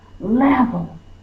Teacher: So you're forceful with the first syllable. That means that's the accented syllable or stressed, and this is unstressed.